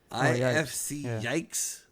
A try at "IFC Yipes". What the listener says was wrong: Yipes, like with a P.